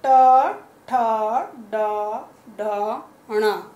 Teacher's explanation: ये वाला वर्ग आपका मूर्धा से बोला जाता है। अब प्रश्न उठता है कि मूर्धा किसे कहते हैं, तो मूर्धा आपके दांतों के पास जो हार्ड सरफेस है जहाँ टच हो रही है जीभ आपकी, ट ठ ड ढ ण बोलने में वो मूर्धा है। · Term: मूर्धन्य